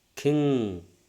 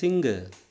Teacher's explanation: the back of the tank is raised towards soft palate and stopping the air and then we are letting out the air through the nose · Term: voiced nasal